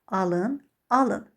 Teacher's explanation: Gördünüz, vurğu indi ikinci hecaya düşür. Birində feil olduqda ilk hecada, amma belə deyək, isim olduqda son hecadadır.